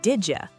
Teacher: In fast, natural English, that D and Y turn into a J sound.